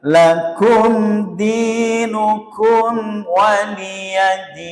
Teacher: Izhar itu jelas, syafawi karena kedua bibir, ya. Huruf yang alat ucapnya kedua bibir. Sehingga tidak boleh ditahan ketika membaca mim sukun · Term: izhar syafawi